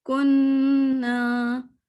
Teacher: نون پہ ہم نے غنہ کرنا ہے